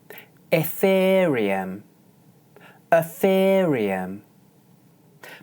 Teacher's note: This is an example of glide. For the first syllable you can either use the sound /ə/ or the sound /ɪ/.